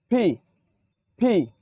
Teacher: পি কে আমরা বলে থাকি পি, বাংলায় পয়র শিকারে পি বলে থাকি, কিন্তু এটি আজকে থেকে আমরা উচ্চারণ করব ফি। ফি, দুই ঠোঁটের মাঝ দিয়ে বাতাস বেরিয়ে ফি। ফি, দুই ঠোঁটটা একটু চেপে ধরে উচ্চারণ করব।